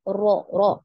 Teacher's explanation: Nah, untuk huruf ro ini kebalikan dari lam ya. Ketika pengucapan huruf ro ya, makhraj itu tidak tertutup rapat ya, karena adanya getaran. Nah, ketika Antuna mengucapkan huruf ro itu ada getaran ya, ro, ro, ada takrir ya, ada takrir di situ.